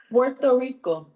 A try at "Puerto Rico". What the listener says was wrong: That's not how they said it out here. Then you gotta roll the R. No, you gotta roll the R.